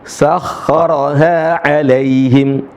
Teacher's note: Perhatikan sering kali teman-teman membaca 'alaihim, alai pakai e. Yang benar adalah pakai i.